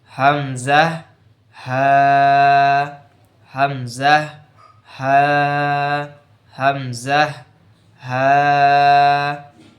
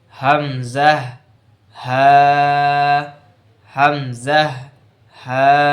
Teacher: 1 নম্বর মাখরাজে হালকের শুরু হইতে হামজা হা